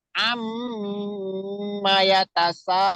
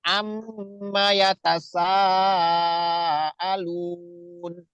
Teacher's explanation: jadi am itu ditahan sampai 2 ketukan atau 2 harokat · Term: mim bertasdid